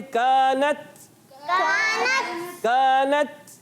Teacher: شدت کی وجہ سے سختی کے ساتھ آواز بند ہو جاتی ہے اور نرمی کے ساتھ, پستی کے ساتھ ہمس کی وجہ سے سانس جاری رہتا ہے. تو آواز آتی ہے کانت کانت. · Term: شدیدہ محموسہ